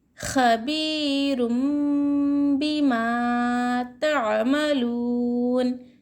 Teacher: यहाँ पर गुन्ना और इख्फ़ा करना चाहिए, थोड़ी देर आवाज़ को नाक में छुपा कर इख्फ़ा करना चाहिए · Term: इक़लाब का क़ायदा